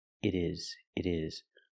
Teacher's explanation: Change the T to a fast D.